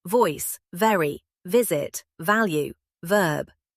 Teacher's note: V, your upper teeth rest lightly on your lower lip and you push air through.